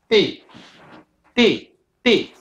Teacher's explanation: Italian T is like a d it is sealed it comes between the teeth and it pulls away d d d okay English T instead hits and bounces off